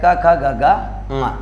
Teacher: क वर्ग का उच्चारण स्थान कंठ होता है